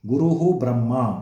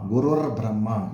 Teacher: ಪೂರ್ವಪದ ಕೊನೆಯಲ್ಲಿರೋ ವಿಸರ್ಗದ ಬದಲು ರ ಆ್ಯಡ್ ಆಯಿತು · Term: ರೇಪಾದೇಶ